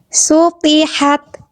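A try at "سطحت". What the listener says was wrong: Oke, bagus.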